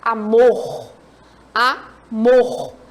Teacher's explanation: Essa sílaba aqui aqui é uma sílaba é a sílaba átona mor é a sílaba forte